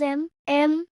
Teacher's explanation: So, with ma, it becomes m. You can feel your voice go down and then up. That's the third tone.